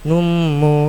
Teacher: domatain bertemu mim tekan dang tiga harakat lamanya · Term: idgham bighunnaah